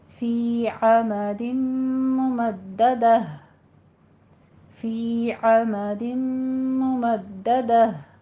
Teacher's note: ممددہ میں دال مشدہ ہے، سختی کر کے رک کر تھوڑا سا پھر آگے پڑھیں گے۔ فی عمد ممددہ، فی عمد ممددہ، یعنی آگ کے لمبے لمبے ستونوں میں۔